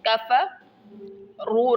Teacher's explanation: را موٹا پڑھیں گے، کفروا، اور اس کو لمبا کریں گے کیونکہ واو اور الف آگے ہے تو یہ جمع کی نشانی ہے۔